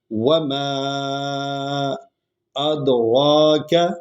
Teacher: دوسری آیت، وما ما کو لمبا کریں گے، دونوں شفوی حروف ہیں، واو ہے اور ما ہے، میم ہے، یہ ہونٹوں سے ادا ہوتے ہیں